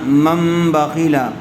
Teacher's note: نون ساکن کے بعد با آ جائے تو نون ساکن کو میم سے بدل کر غنہ اور اخفاء کے ساتھ پڑھیں گے، اس کو اقلاب کہتے ہیں۔